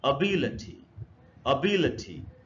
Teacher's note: the stress is on बी in this word